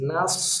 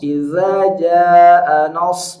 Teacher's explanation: Jangan nos. Nah-nya tipis, shad-nya tebal.